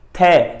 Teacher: थै साडे उतले दंदां नाल साडे जीभ दी नोक लग रही है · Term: दंती व्यंजन